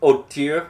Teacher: with a little French silent H at the beginning, just to show how educated you are to know not to pronounce the H